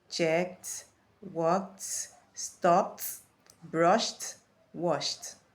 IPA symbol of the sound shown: t